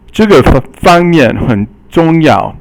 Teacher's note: fang is the first tone and mian is the fourth tone